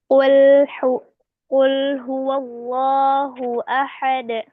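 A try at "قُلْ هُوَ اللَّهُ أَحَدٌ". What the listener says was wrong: Nah, di sini huwa jangan huwo, wo, jangan jadi wo, ya. Wow di sini wa. Qul huwallahu ahad, huwa, wa, jangan wo.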